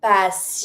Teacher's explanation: Don't pronounce the t. It's muted at the end.